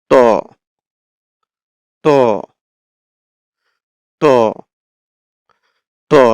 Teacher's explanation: এই তর উচ্চারণ হয় হচ্ছে জিহ্বার আগা সামনের উপরের ২ দাঁতের গোড়ার সঙ্গে লাগিয়ে। এই যে উপরের ২ দাঁতের এই গোড়াটার যে অংশটুকু, এই যে ধরেন এটা আমরা ২ টা দাঁত যদি বলি, এই যে গোড়ার সাথে যে লেগে থাকবে এই অংশের সাথে লাগবে।